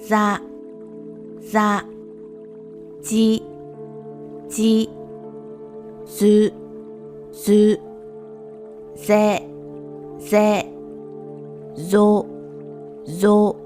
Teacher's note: Z is a voiced sound, meaning that the sound is produced with vocal cord vibration, but with little to no air expulsion. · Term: voiced Z sound